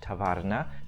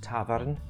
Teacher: And then, after some time, the endings of many words stopped being pronounced. So we lost the final vowel in the word tavarna, now pronounced tavarn